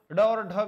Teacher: ड और ढ व्यंजन के लिए सटीक बात कही गई, उत्क्षिप्त मूर्धन्य व्यंजन है, बिल्कुल उत्क्षिप्त है और मूर्धन्य व्यंजन है, बिल्कुल सटीक बात यही है मित्रों।